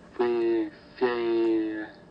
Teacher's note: the transition is showing that the tongue is not quickly moving into the E position